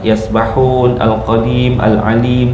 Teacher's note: mad arid >> lissukun. Boleh panjang dua, empat dan >> enam harakat